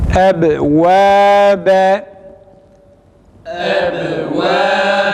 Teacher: Kalkale ise cezimli halinde ba harfi okunduğu zaman hafif bir sarsıntı şeklinde ses tonu bu şekilde çıkarılarak okunur.